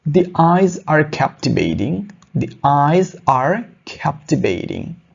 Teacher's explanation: যদি ভাওয়েল সাউন্ডের আগে দা থাকে তাহলে তার উচ্চারণ হবে দি এর মতো